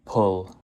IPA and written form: pʊl (pull)